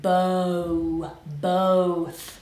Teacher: So I wanna hear oh. I hear Spanish speakers often say both. We gotta make it round.